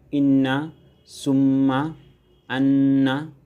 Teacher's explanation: নাকের মাধ্যমে গুন্না করে উচ্চারিত হয়